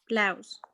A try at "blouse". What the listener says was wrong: Blouse. You know, when you say out, O-U-T, out, blouse. So blouse instead of a long O sound, okay?